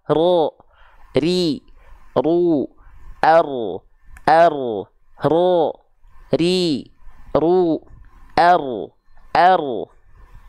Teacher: Walaupun dia sifatnya takrir bergetar tapi sedikit tapi getarannya tegas lugas dan jelas